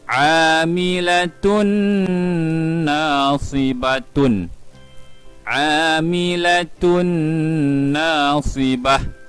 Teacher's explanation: Ini juga adalah idgham ma'al ghunnah. Kita perlu memasukkan bunyi tanwin ke dalam huruf nun pada kadar dengung 2 harakat. Kita akan baca amilatun nasibatun, amilatun nasibah pada kadar 2 harakat dengung.